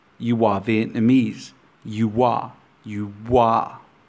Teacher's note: In English, we use the intrusive W sound to glide between vowel sounds of adjacent words.